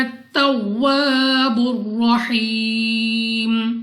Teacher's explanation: الف سے پہلے زبر الف مدہ 2 سیکنڈ تک لمبا کرنا ہے۔ را پر زبر را کو پر یعنی موٹا پڑھیں گے، منہ اور آواز کو کھول کر۔